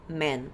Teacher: ele vai ter o som do E fechado